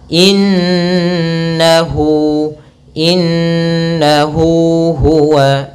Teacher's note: ini panjangnya untuk Mad Silah qasirah adalah dua harakat